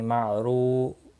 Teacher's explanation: را پیش کی وجہ سے پر پڑا جائے گا، واو مدہ بھی ہے، 1 الف کے برابر کھینچ کر پڑھیں گے